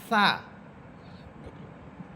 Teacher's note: জিহ্বার আগা সামনের উপরে দুই দাঁতের আগার সাথে লাগবে। সা। সা হরফের সিফাত হচ্ছে সা এটা নরম হরফ।